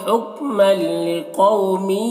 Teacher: इदगाम ताम हो रहा, तनवीन को लाम से मिलाकर बगैर गुन्ना के साथ पढ़ेंगे। लिकौ में कौफ को ऊपर पढ़ेंगे, वाउली ने से नरम आवाज़ के साथ जल्द पढ़ेंगे।